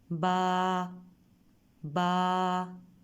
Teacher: با کو ادا کرتے ہوئے اوپر والا ہونٹ اور نیچے والا ہونٹ آپس میں ملیں گے